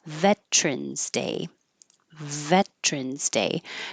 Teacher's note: most of the time it's being shortened to just two syllables and keeping the T